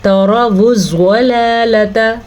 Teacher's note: تروا الضلالۃ، زواد کو ہم پر پڑھیں گے، زواد ہمیشہ موٹا پڑھا جاتا ہے، اکثر لوگ اس کو زلالۃ پڑھ لیتے ہیں تو وہ زواد نہیں زا بن جاتی ہے